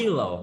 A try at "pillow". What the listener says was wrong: Bật hơi ra, bật hơi các bạn, bật hơi ra một chút nữa.